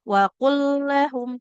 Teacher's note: Lam sukunnya tidak dibaca, langsung aja leburkan ke huruf lam yang di depannya, mutamatsilain. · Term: Mutamasil lain